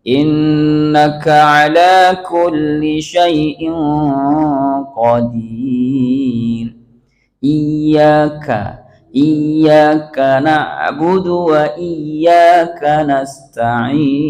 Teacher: Keluar nafas itu, kalau Bapak ka-nya nggak keluar, itu nggak hamas namanya Pak. Ketika keluar pasti dia akan mengatakan ka.